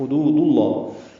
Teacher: ہا وسط حلق سے ادا کریں گے